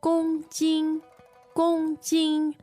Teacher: okay, that's kilogram. Yes, 2 first tones.